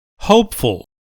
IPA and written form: ˈhoʊpfəl (hopeful)